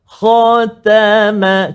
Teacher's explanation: Terkesan ataupun terpengaruh dengan menebalkan huruf kha. Jadi kha saja tebal, ta tak tebal, ma tak tebal.